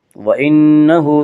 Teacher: نون مشدد غنہ ہوگا، غنہ کی مقدار 1 الف ہے۔ وَإِنَّهُ ہا کے اوپر الٹا پیش ہے، الٹا پیش قائم مقام ہے واو مدہ کی، اس لیے الٹا پیش کو 1 الف کے برابر کھینچ کر پڑھیں گے۔